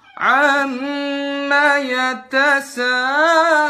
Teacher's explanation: Ini memanjang-manjangkannya pada huruf gunnah. Mim sama nun yang bertasydid dipanjang-panjangin. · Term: tatloninul gunnat